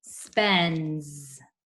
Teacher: I agree that we should put a little Z on the top of the S. The S in the word spends in the suffix is making the Z sound.